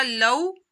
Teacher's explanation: सौफ़ा तअलमून वऊ मदा होगा, वऊ साकिन से पहले पेश आ रहा है तो वऊ मदा करना है और वऊ साकिन से पहले ज़बर आ जाए तो वऊ लीन हो जाता है, रुफ़े लीन को लंबा नहीं किया जाता।